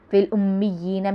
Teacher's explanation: فی الامیین میں مشدد ہے اس لیے جماؤں کے ساتھ پڑھیں گے، یا بھی مشدد ہے اس لیے جماؤں کے ساتھ پڑھیں گے اور یا کو ایک الف کے برابر کھینچیں گے